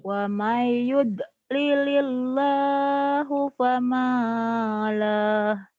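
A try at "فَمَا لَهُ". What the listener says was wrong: Famalah jadi pendek kalau berhenti ya. Famalah. Lilillah. Lilillah. Wa mayyud lilil kan tipis ini mah. Jangan ditebelin. Wa mayyud lilil. Wa mayyud lilil. Wa may.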